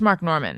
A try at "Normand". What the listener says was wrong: It's a French name, and some people give me the full Normand, which makes me uncomfortable. But yeah, it's Norman. I just don't.